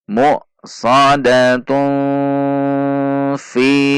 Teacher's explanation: Tunnya dibaca ikhfa. Namun ketika diwaqaf dibaca ha sukun.